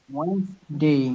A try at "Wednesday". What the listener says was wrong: ওয়েডনেস না, ওয়েডনেসডে এরকম কিছু নাই, এই ডিটা